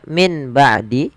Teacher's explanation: suara nun yang sukun diganti dengan mim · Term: iqlab